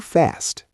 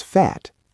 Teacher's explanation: The A becomes A umlaut, creating a sharper, higher sound, much easier to pronounce when speaking quickly.